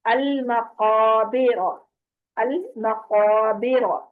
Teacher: ساکن قاف کو جب آپ ادا کریں گے تو اس کی آواز پلٹ کے آئے گی، یہاں پر کلکلا بھی ہوگا۔